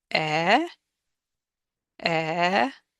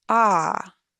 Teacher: the first one is e e if I move my tongue backwards and make no other change becomes ah